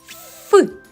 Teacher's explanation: Так це звук ф [музика] промов звук ф біля дзеркала подивись нижня губа наближена до країв верхніх зубів а посередині залишається вузька щілина через яку проходить наше повітря при промовлянні верхні зубки злегка видно скажи а як шумить вода · губи і зуби створюють перешкоду і повітря вільно не виходить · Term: приголосний